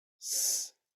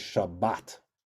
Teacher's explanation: The Ashkenazim pronounce it as an S.